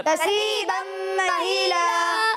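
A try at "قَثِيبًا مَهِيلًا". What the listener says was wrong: कसीबम महीला। अच्छा, यहाँ सा है, सा में सीटी की आवाज़ नहीं आती, ठीक है। ये कसीबम नहीं है, ठीक है। कसीबम महीला, कसीबम नहीं, कसीबम महीला, कसीबम महीला। अभी भी कसी हो रहा है, कसी नहीं है ये, कसी। कसीबम महीला, वकानतिल जिबालु कसीबम महीला, यौम तरजुफुल अर्दु वल जिबालु वकानतिल जिबालु कसीबम महीला।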